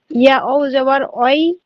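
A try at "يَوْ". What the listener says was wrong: উল্টো হয়ে গেল, ইয়া যাবার ওয়াই না, ইয়া যাবার ইয়াও।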